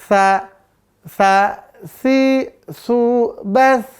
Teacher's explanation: Berasa gak pangkal lidahnya terangkat? Enggak ya. Maka namanya istifal.